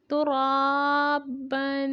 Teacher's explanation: با دو زبر الف بن، ترابن۔ را پہ کھڑی زبر ہے، ایک الف کی مقدار تک لمبا کریں گے اور با تنوین ہے، غنہ کریں گے